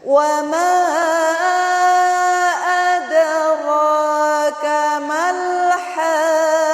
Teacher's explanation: Wa ma mim berharokat fathah bertemu dengan alif adalah mad tabi'i, kemudian mad tabi'i bertemu dengan huruf hamzah pisah kalimat, namanya adalah mad jaiz munfasil, panjangnya 4 sampai 5 harokat. · Kemudian ada ro, ada dal sukun. Dal adalah huruf qalqalah. Dal sukun di tengah kalimat namanya qalqalah sughra.